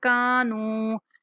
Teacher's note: کاف کے بعد الف مدہ، نون کے بعد واو مدہ، دونوں کو کھینچ کے پڑھیں گے